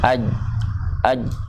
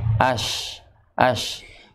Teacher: jim itu dia lebih lekat, dia melekatkan pada langit-langit. Ya, ya, jadi pasnya itu ketika kita mengucapkan huruf jim yang mati, aj, aj.